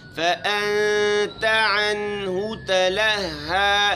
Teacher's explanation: اخفا کرنا ہے، لہو میں ہونٹوں کو گول کرنا ہے. تلہا ہا کو لطافت کے ساتھ پڑھنا ہے.